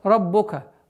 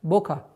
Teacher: ра твердая, но при произношении огласовки дамма нужно быть максимально внимательным, чтобы не переходило в звук о.